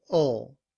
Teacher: we don't pronounce the W, and we just use the schwa and the L to say ul